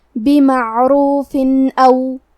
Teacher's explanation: اظہار کا معنی ہے ظاہر کرنا اور کیونکہ تنوین کی اصلیت نون ساکن ہے تو ہم یہاں تنوین ظاہر کریں گے اور اسے نون ساکن پڑھیں گے اور بغیر غنہ سے یہ حکم کو ادا کریں گے